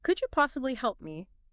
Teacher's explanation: a gentle upward curve, often combined with a slightly softer tone